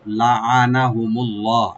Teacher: নুন ওপেন থাকবে আর লফজ জালাল এখানে আমরা ডিপ করে পড়বো